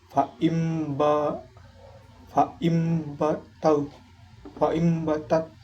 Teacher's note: Iqlab itu ketika nun sukun atau tanwin bertemu dengan ba dibacanya yaitu maka bunyi nun berubah menjadi mim dan dibaca sedikit dengung.